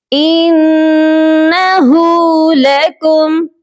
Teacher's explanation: नून मुशद्दद है, यहाँ पर गुन्ना लाजमी किया जाएगा और हा के ऊपर उल्टा पेश है, इसको भी हमने एक अलिफ की मिकदार लंबा करना है।